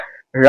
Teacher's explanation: இந்த ழா எப்படி வரும்னா நாவின் நுனி மேல்நோக்கி வளைந்து வருடுவதால்